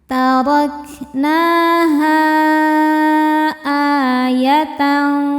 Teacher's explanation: Hamzahnya A pada kata kedua yaitu ayat. Maka H-nya panjang boleh empat boleh lima harakat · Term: mad jaiz munfasil